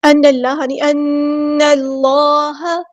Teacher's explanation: کے ساتھ ملا دینا، حمزۃ الوصل ہمارا ڈراپ ہو جائے گا، اللہ کا جو لام ہے یہاں پہ بہت ہیوی موٹا ادا کریں گے